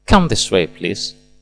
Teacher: Come dilafalkan dengan nada naik menunjukkan ajakan penuh semangat.